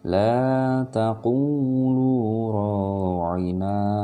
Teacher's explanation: Kalau mau berhenti tetap dia suaranya na, tidak ra'in.